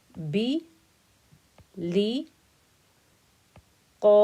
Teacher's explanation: because qaf is thick and heavy, the whole of my 4-count stretch got made thick and heavy.